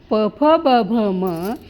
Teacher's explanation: प फ ब भ म यांना ओठव्य म्हणतात, कारण यांचा उच्चार ओठ जुळल्याने होतो.